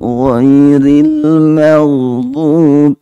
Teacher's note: Itu juga ingat yang tadi ghain itu dibaca tebal. Waktu sukun tetap tebal.